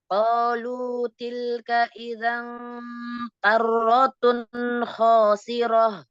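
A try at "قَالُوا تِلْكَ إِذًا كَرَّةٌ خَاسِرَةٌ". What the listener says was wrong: Di sini tun di antara dua tebal. Karro dan kho. Yang ro dan kho tebalnya bagus. Tapi tun tipis.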